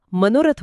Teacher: मनह अधिक रथ म्हणताना ते ओठ गोल होण्याच्या प्रक्रियेतून नैसर्गिक रित्या मनोरथ बनत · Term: विसर्ग